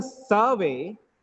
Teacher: Survey, noun. First syllable stress.